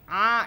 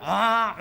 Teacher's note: boleh a Nah bukan aa tapi a napasnya tertahan kalau kita rasakan dengan tangan A itu tidak ada udara yang keluar